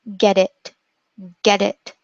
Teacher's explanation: So what you have to do is make sure that your tongue goes up and down very quickly and it doesn't completely touch this place behind your teeth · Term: morphing T